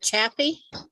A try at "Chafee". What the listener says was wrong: it's a long A. It's Chafee. Everybody says it with because it has two F's in it, right? So, I mean, it makes sense that it would be Chappie, not Chafee, but it's Chafee.